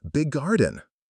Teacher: The 2 G sounds just merge.